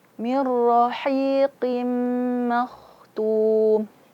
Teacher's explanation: Ma tipis pada posisinya dan kho tebal pada posisinya.